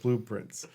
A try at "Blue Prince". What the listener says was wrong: But it's 2 words. That time it was 1 word. That time you said blueprints.